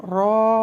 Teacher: ரா அப்படின்னு பின்னாக்க தூக்கி வல்லினமாக சொல்லணும்.